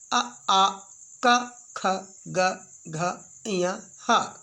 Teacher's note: अ आ क ख ग घ ञ ह, विसर्ग आहा, ये कंठ से निकल रहे हैं।